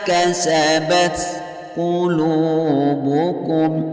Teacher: Bima kasabat qulubukum, qulu hukum bacaan matabi'i karena ada waw sukun yang diawali baris dhammah. Cara membacanya bunyi lu dipanjangkan sampai 2 harokat.